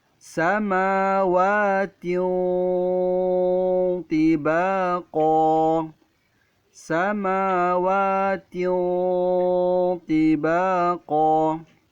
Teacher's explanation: Pada potongan ayat ini Ustadz akan membahas pada huruf ta yang berbaris 2 di bawah, kasrotain, bertemu dengan huruf to, maka cara membacanya didengungkan, disamarkan dan tebal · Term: ikhfa